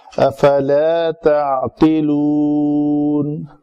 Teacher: اگر لا کو لمبا نہیں کریں گے تو وہ لفظ بن جائے گا، معنی میں ٹوٹل تبدیلی آ جائے گی